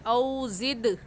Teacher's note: زد میں دال کی آواز واپس پلٹ کر آئے گی کیونکہ دال حروف قلقلہ میں سے ہے، اور حروف قلقلہ 5 ہیں، قاف طا با جیم دال، اور جب یہ حروف ساکن ہوں تو ان کو ہلا کر پڑھتے ہیں، ان پر قلقلہ کرتے ہیں.